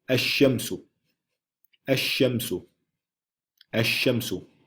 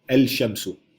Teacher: Lam bliver ignoreret, Og på det første bogstav i ordet, shin i det her tilfælde, der bliver der sat en shadda på. Så man ignorerer lam, og man sætter en shadda på. Så der kommer til at stå ash-shamsu, ash-shamsu, ash-shamsu.